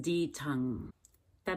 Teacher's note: the tongue comes up and taps very quickly and lightly many times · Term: fast D